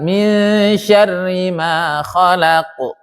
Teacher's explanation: Lidah posisi di atas isti'la, dia tebal. Tapi jangan terlalu tebal karena dia bukan itbaq. Dia bukan huruf itbaq yang sangat tebal. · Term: qalqalah